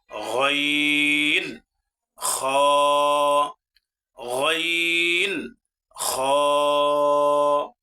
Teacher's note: তৃতীয় নম্বর মাখরাজ কণ্ঠনালীর শেষ ভাগ হইতে উচ্চারিত হয় দুইটি হরফ, গইন, খ